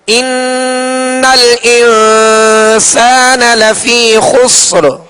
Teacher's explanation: تو اب یہ کہ حروف اخفا میں سے، لہذا ایک الف کی مقدار میں غنہ کریں گے اخفا کا، یعنی ناک میں آواز کو ایک الف کی مقدار میں چھپائیں گے